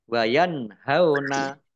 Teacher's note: Nun sukun bertemu dengan huruf ha, bacaan idhar, dibaca jelas.